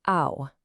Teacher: Yep, our friend the glottal stop. So a word like how, which normally begins with that breathy H sound, becomes ow. Notice it's not just ow, like when you stub your toe.